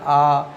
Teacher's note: जैसे हम लोग आ बोलते हैं ना आ तो मुंह ज्यादा खुलता है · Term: विवृत